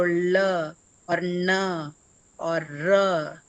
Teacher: So what happens is the tongue rolls backward as you articulate these sounds. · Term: retroflex sounds